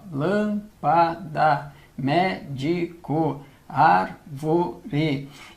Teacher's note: Sendo a antepenúltima a sílaba tônica, nós estamos diante de uma proparoxítona. Estando diante de uma proparoxítona, ela sempre, sempre, sempre será acentuada.